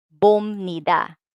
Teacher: we are going to read this as bomnida with the M sound, not the original sound P